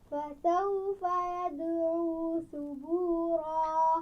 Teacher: سین کے مخرج میں یعنی سین کی آواز میں سیٹی کی آواز آنی چاہیے